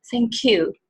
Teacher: や っ と you が 入 っ て ど う い う 意 味 か わ か る ん で す よ ね。 な の で、 Thank you の 時 は 最 後 ま で し っ か り と 言 っ て、 し か も 最 後 の 方 を ち ょ っ と 強 め に 長 く 発 音 す る。